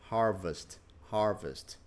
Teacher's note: Olha só a letra I em inglês. Tem um som de parece um E. Curto.